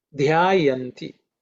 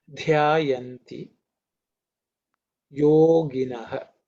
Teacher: this is the fourth letter, fourth dha, so it's aspirated with Mahaprana.